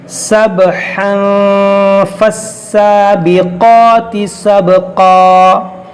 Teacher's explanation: अगर मिलाएंगे तो तनवीन के बाद फ़ा है तो यहाँ पर इख्फ़ा करेंगे